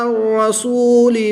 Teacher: واو ساکن سے پہلے لام پر پیش ہے تو واو مدہ ایک الف یعنی دو حرکات کے برابر کھینچ کر پڑھیں گے